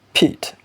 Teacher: So the first sound in pit, that is the phonetic alphabet, which is the voiceless bilabial stop. That is, the airstream is completely obstructed at some point and then released suddenly.